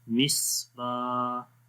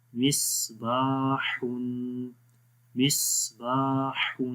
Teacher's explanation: میم صاد زیر مس، با الف زبر با، یہاں پر لمبا کریں گے، الف زبر کے بعد الف آ رہا ہے تو اس لیے الف مدہ ہوا، تو لمبا کریں گے ایک الف کے برابر یعنی 1 سیکنڈ